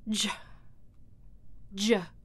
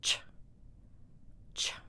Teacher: here we have affricate ch voiceless